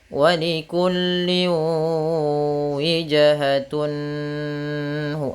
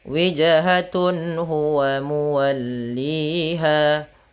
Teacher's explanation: Maksudnya apabila ada nun sukun atau an, in un bertemu dengan huruf halqi yaitu huruf tenggorokan salah satunya huruf ha, maka dia harus dibaca dengan jelas suara tanwin atau nunnya dan tidak boleh ditahan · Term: izhar halqi